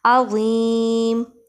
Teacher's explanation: عین کو وسط حلق یعنی حلق کے درمیان والے حصے سے ادا کریں گے